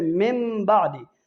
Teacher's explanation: نون ساکن یا نون تنوین کے بعد اگر با آ جائے، ٹھیک ہے، اس کو میم سے بدل کر پڑھیں گے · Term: اقلاب